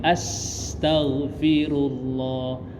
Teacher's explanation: Nah sinnya itu mengalir, nggak ditahan as tapi dia mengalir ya, dialirkan suaranya karena namanya sifatnya rakhoah.